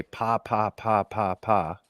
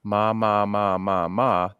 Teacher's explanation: you're going to feel that puff of air hit your hands. If you change that to an M, ma, ma, ma, ma, ma, that puff of air goes away